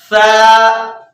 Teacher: زبان کی جو نوک ہے اس کو اوپر والے دانت کے نیچے لے کر آئیں گے،